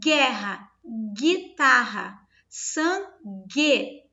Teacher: Quando eu pronuncio a palavra guerra, vocês vão observar que vai ser assim, ó, gué. Não existe som de U, só existe o som de gué. É como se fosse esse G junto com esse E sonorizando.